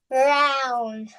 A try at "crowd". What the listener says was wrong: crowd, not crown. Crowd. Letter D.